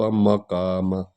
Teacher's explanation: میم کو جو ہے نا ہونٹوں سے ادا کرنا ہوتا ہے، اور یہ قاف جو ہے یہ حلق سے ادا ہوگی